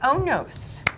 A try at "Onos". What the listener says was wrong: The accent on the on the second part.